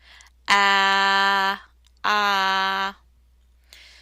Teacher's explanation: the I is pronounced with the mouth open tongue down and back it's pronounced in the back of your mouth ah ah and the E is produced by smiling basically okay